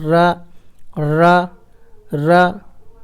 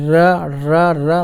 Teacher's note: जिस व्यंजन का उच्चारण करते समय हमारी जिह्वा बेलन की तरह गोल हो जाती है उसे लुंठित कहते हैं, लुढ़कता हुआ जैसे।